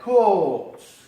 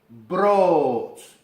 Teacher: Lo que hacemos es alargar el sonido de la O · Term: doble vocal